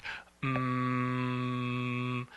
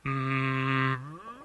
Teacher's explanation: the air that's coming out of our vocal cords you know the air that's moving across our vocal cords and vibrating them and then that vibration is carried out it's actually going out of our nose it's weird you pronounce em with your nose yes you do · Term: M sound